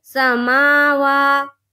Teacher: खड़ा ज़बर को एक अलिफ के बराबर खींचकर पढ़ेंगे